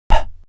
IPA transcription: p